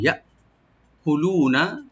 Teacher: লু একালে টানবেন, নুনে কোনো টান হবে না, ওপেন করে পড়বেন